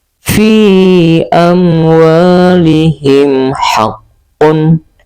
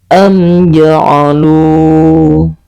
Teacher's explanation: mim mati bertemu dengan seluruh huruf hijaiah selain huruf mim dan huruf ba, maka kita membacanya secara jelas dan terang tanpa didengungkan ataupun disamar-samarkan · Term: izhar syafawi